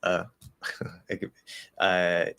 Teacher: you can cut the diphthong and say the ah